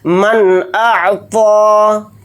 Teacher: حمزہ اظہار حلقی کے حروف میں سے ایک حرف ہے. یہاں پر نون کی آواز کو ظاہر کر کے بلا غنہ کے جلد پڑھیں گے · من اعطى، حمزہ کو عین ساکن کے ساتھ ملا کر پڑھیں گے، طوا کو یہاں پر موٹا یعنی پر پڑھیں گے، اور طوا کے اوپر کھڑا زبر ہے، طوا کو تھوڑا کھینچ کر پڑھیں گے، ایک الف کی مقدار